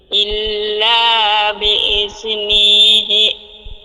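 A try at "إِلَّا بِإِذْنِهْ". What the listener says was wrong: না, হি বলার দরকার নেই, যেহেতু ওয়াকফ করে দিছি আর হি বলার দরকার নেই, নি এরকম হইয়া যাবে।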